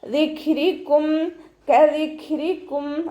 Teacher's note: കദിക്രിക്കും, കാഫ് ഉച്ചരിക്കുന്ന സമയത്ത് കുറച്ചൊന്ന് ചെരിച്ചു കൊടുക്കുക. കാഫ് സുക്കൂനാവുന്ന സമയത്ത് കുറച്ച് എയർ പാസ് ചെയ്യണ സൗണ്ട് കൊടുക്കുക